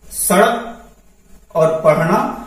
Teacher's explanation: हमारी जीभ ऊपर जाती है और झटके के साथ नीचे आती है और जब उसमें जो उच्चरित होता है उसको उच्छिप्त व्यंजन कहते हैं।